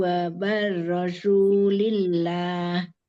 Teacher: Wa barazu zai. Ujung lidah hampir nyentuh gigi jari bawah.